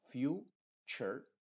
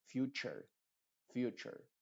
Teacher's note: Universe cubec Future te fijas no se dice Future sino Future esta t u forma el sonido ch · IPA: /ˈfju:tʃər/